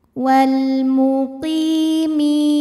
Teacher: Mi ini adalah mad tabi'i zahiri. Sebab huruf ya sukun didahului baris kasrah. Maka huruf mim kita panjangkan 2 harokat.